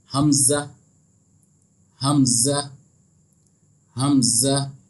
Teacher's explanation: हमज़ा का जो मखरज है वो हा के मखरज की तरह ही है, यानी हल्क के आखिरी हिस्से से जो है ये अदा होता है